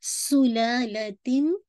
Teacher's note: सुलालतिन, ला को 2 count stretch कीजिएगा